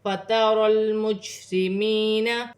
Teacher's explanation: یا ساکن سے پہلے زیر آ رہی ہے تو یا مدہ بن رہی ہے، ایک الف کی مقدار کھینچ کر پڑھا جائے گا ، جیم ساکن ہے، قلقلے والا حرف ہے، قلقلے کے ساتھ